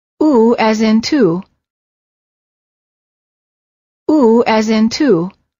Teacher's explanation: are tense and rounded as if you're blowing a balloon and the tongue is slightly tense and raised High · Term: ooh sound